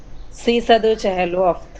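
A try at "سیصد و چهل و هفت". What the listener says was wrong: دیکھا یہ واو کو وا نہ پڑھیں.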